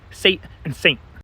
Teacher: the N gets swallowed into the T and two I don't really pronounce the T at the end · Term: nasal vowel